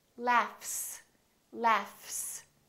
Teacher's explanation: voiceless sound let me give you another example the word laugh this gh is actually an f sound right there's no vibration in my vocal chords so the f is actually a voiceless sound so that means the s that follows it will also be